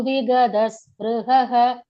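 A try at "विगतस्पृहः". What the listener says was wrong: Vigada alone. Vigata. First ta.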